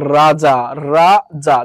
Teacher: এই র টা উচ্চারণের সময় জিহবার আগা বেশি কাঁপে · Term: কম্পন জাত, কম্পনজাত